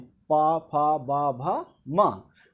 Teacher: पा वर्ग में आते हैं जो ओठ से उच्चारित होते हैं,